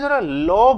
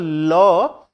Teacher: ল দেখবে জিহবা আমাদের তালুতে লেগে যাচ্ছে। লাগার পর তার দুটো দিক জিবার দুটো দিক থেকে বাতাস বেরিয়ে আছে। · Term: পার্সিক ধ্বনি